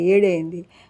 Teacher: ముందు వకారం లోపంలో వేడి కాస్త ఏడైంది, విను కాస్త ఇను అయింది